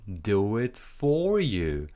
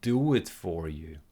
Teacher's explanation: Rise in intonation, and then we fall, so the voice goes down because we're finishing the sentence.